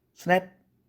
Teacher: 스는 무성음이고 느는 4도짜리의 유성음이죠